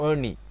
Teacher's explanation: ஏணி என்பதுதான் சரியானது ஏன்னா இந்த நாக்கு இந்த ஏ என்பதை சொன்னதன் பின்பாடு இந்த நீ என்பதை சொல்லுகின்ற பொழுது நாக்கு நன்றாக வளைய வேண்டும் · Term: வளைனா ஒளி